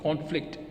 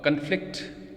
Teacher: the stress in nouns is on the first syllable and stress in verbs is on the second syllable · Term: stress shift